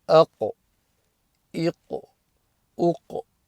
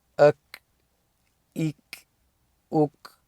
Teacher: You'll have noticed a difference between those because the makhraj is slightly different, and also qaf is a kalkala letter